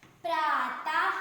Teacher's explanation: विसर्ग हमें हा व्यंजन की भी ध्वनि देता है